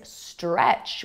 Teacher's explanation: Another word with a consonant cluster is stretch. We have s, t, r, the S, T, and R sounds. So we have three consonants that are clustered together. And then the TCH sound at the end of the word is actually one sound.